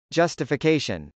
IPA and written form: dʒ.ʌstəfəkˈeɪʃən (justification)